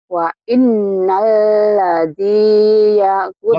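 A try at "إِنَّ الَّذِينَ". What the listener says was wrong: Bukan wa innal. Innalladzi. Innalladzina. Ada wa-nya. Innal. Enggak wa-nya, enggak ada wa-nya. Innal. Innal.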